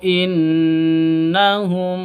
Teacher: gunah musyaddadah jadi dengung dua ketukan